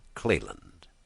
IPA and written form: ˈkliːlənd (Cleland)